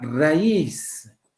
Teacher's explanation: la mayor fuerza de voz está en la I